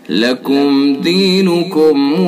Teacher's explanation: لکم دینکم یہ میم ساکن ہے، اس کے بعد دال ہے، اس کے اندر اظہار ہوگا، اظہار شفوی۔